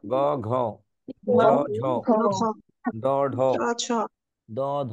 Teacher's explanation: দ্বিতীয় আর চতুর্থ বর্ণ দেখুন, কয়ের চাইতে খতে বাতাস জোরে বের হয়, এটা মহাপ্রাণ। · গয়ের চাইতে ঘতে বের হয়, মহাপ্রাণ।